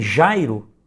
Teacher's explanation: em que a sílaba tônica é a penúltima, nós temos uma paroxítona